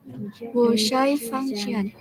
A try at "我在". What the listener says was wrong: Wocai, bukan wosai. Cai, pakai C.